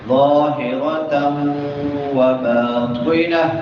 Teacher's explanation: ادغام مع الغنہ ہو رہا ہے، نون تنوین کے بعد واو ہے تو یہاں پہ ادغام مع الغنہ ہوگا، تھوڑا سا لمبا کر کے پڑھیں گے ملاتے ہوئے۔ ظاہرۃ وباطنہ، قا موٹے حروف میں سے ہے، اس کو موٹا کر کے پڑھیں گے، اور آخر پہ یہ جو تا ہے ہم یہاں پہ وقف کر رہے ہیں تو اس کو ہا میں بدل دیں گے۔